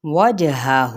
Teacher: لام کی زبر اور میم کی زبر، ان حرکات کو ہم لمبا نہیں کریں گے، جس کو عربک میں فتحہ بھی کہا جاتا ہے۔ وجہہ، جیم پہ قلقلہ کریں گے یعنی ہلائیں گے، وجہہ اس طرح سے نہیں پڑھیں گے، وجہہ، وجہ یہ والی ساؤنڈ آنی چاہیے۔